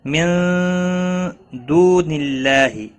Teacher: نون ساکن کے بعد حروف اخفا میں سے ایک حرف آیا ہے، اخفا حقیقی ہوگا، گنہ کے ساتھ پڑھیں گے۔ دو واو مدہ ہے، ایک الف کے برابر کھینچ کر پڑھیں گے۔